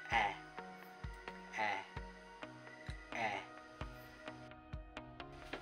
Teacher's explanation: nasa pagitnang posisyon ang ating dila. At harap na bahagi ng ating dila.